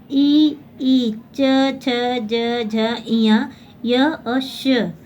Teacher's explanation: जिन ध्वनियों का उच्चारण तालु की सहायता से होता है यानी तालु के स्थान से होता है उसे तालव्य वर्ण कहते हैं।